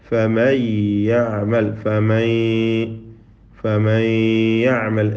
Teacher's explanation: ദീർഘം നൽകപ്പെടുന്ന അല്പസമയം എടുത്തുകൊണ്ടുള്ളതായ ആ ഗുന്നത്ത് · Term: ഗുന്നത്തുൻ മുതവ്വല